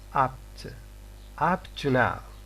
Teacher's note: the first stop lacks phase 3, but the second stop lacks phase 1 · So phase 3 here is not, it is absent, in the production of p. So p is incomplete in apt and in up to now. · The air which is kept for the production of p is not released after at the end of the pronunciation of p. The air is still kept, it is being still held in the mouth, and we go on to the production of t. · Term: incomplete stops